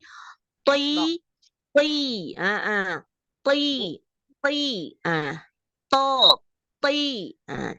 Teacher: ujung lidah ketemu dengan pangkal gigi seri atas atau tempat tumbuhnya gigi seri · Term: huruf ta